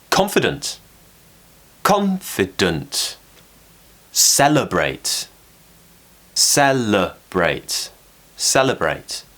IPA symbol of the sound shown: ə